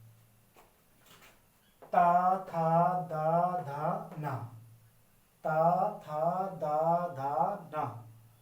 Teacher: आपकी जीवा दांतों पर छुके जाएगी ऐसा आप मतलब इनमें से आप पांचों में से किसी भी वर्ण का उच्चारण बिना दांत पर जीव को लगाए नहीं कर सकते हैं